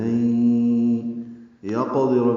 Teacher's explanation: لین یقدر میں قاف ساکن ہے، اس پہ قلقلہ ہے. دال اور را جلدی پڑھیں گے، را پر پڑھیں گے.